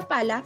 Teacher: la P es oclusiva, bilabial sorda